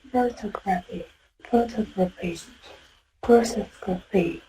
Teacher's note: It's stressed on the ta.